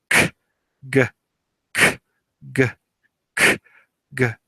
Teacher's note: Velar, tongue and soft palate.